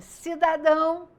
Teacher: o dão é a parte mais forte na pronúncia da palavra por isso é forte eu coloco mais intensidade mais ênfase eu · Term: oxítonas